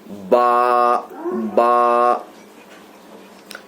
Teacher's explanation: با کا جو مخرج ہے دونوں ہونٹ کے تر حصہ سے ادا ہوتا ہے. دونوں ہونٹ کے تر حصے سے، مطلب اوپر کا ہونٹ اور نیچے کا ہونٹ، دونوں ہونٹوں کے تر یعنی گیلے حصے سے.